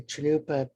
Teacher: it's a phonetic way of saying that the n is nasalized and barely barely spoken it's more of a a signal to nasalized but because there's